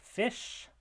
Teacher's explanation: the final sound in the word fish is a voiceless palatal fricative.